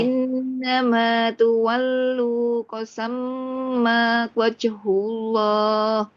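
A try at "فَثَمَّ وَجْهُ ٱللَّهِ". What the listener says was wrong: Nggih, kurang ke tengah. Kurang tekan. Wajh.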